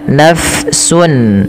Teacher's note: Huruf fa harus dialirkan nafasnya. Ah mengalirnya nafas di dalam bahasa, maaf di dalam kajian ilmu tajwid yaitu kita kenal dengan istilah sifatnya namanya hames, yaitu mengalirnya nafas. · Nah, dia ketika ada fa alirkan nafasnya. Naf tidak ditahan naf. Nah, tidak diganti pula dengan huruf P. Tapi dia mengalir F ya.